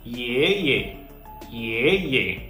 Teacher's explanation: in the first syllable our voice was Rising · first syllable our voice was Rising y in the second to in the second syllable our voice was neither falling nor Rising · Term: second tone, neutral tone